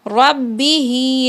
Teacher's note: کھڑی زیر جو کہ حروف مدہ کے قائم مقام ہے تو اسے بھی آخر میں 2 سیکنڈ کھینچنا ہے